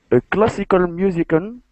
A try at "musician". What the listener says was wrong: And let me help you with musician. Musician. There's actually an SH sound there. Musician. Musician.